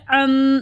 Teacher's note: عین نون ساکن کی آواز کو میم میں بدل دیں گے. ام اکفا کرنے، ام ہونٹوں کو بند کر لے، ام.